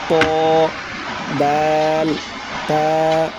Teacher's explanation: জিহ্বার আগা সামনের উপরের 2 দাঁতের গোড়ার সঙ্গে লাগাইয়া উচ্চারণ হয় 3টি অক্ষর ত, দাল, তা